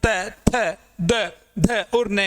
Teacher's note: आपके जीभ की आगे की जो नोक है वो आपके ऊपर वाले दांतों के पीछे वाले मसूड़ों को टच करती है। उसके बाद में हम त, थ, द, ध और न का उच्चारण कर पाते हैं, इसलिए इन्हें दंत्य व्यंजन नाम दिया गया है।